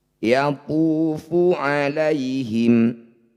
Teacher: dhammah diikuti waw sukun, disebut bacaan mad tabi'i. Panjangkan 2 harokat atau 1 ayunan.